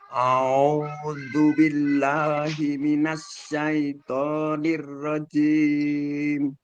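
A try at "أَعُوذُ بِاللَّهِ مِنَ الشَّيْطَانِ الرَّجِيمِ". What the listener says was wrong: Cuma kurangnya mungkin di syaitoni, minasya, shinnya itu mungkin agak sedikit ke dalam ya lidahnya. Jadi yang dipakai lidah bagian tengahnya, bukan yang depan. Kalau depan nanti keluarnya pasti huruf sin, minasa, minasa. Nah, ini bukan sin tapi ini shin. Sehingga yang perlu ditekan adalah tengah lidah kita. Minasya, minasya, sya.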